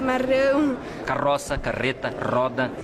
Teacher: Calor com R. O pessoal de São Paulo, capital, Curitiba e boa parte dos gaúchos faz o R com a ponta da língua.